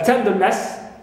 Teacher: ness is neutral, and ten, first one, is stressed